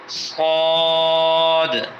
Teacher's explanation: صاد کے اندر موٹا اس کو کریں گے اور لمبا کر کے آخر میں دال ادا کریں گے۔ دال میں قلقلہ ہوتا ہے۔